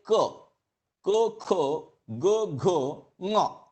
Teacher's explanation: whenever you say ko, ko, go, ngo, at that time your root of the tongue is getting touched. At that time, vocal cord is also producing a sound, but that is being modulated by the root of the tongue.